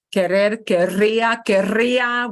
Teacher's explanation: we do have to Trill that R